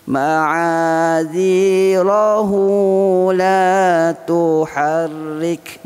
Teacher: dibaca 2 harakat saja hu-nya. Tapi kalau berhenti ma'adzirah, hilang dah waw tu. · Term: qasir